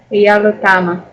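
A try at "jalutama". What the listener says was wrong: Вот у вас эта ошибка все время продолжается, что ударение хотите переставить еще куда-то, да? То есть первый слог только. Ну-ка прочитайте правильно, чтобы ударение было на первом слоге всюду. И чтобы на других слогах не было.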